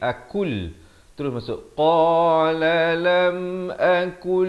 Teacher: Di sini idgham bila gunnah, nun mati bertemu lam.